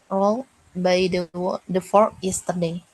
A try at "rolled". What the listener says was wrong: rolled. Ada ed-nya dibaca rolled. ed-nya ya harus agak jelas sedikit.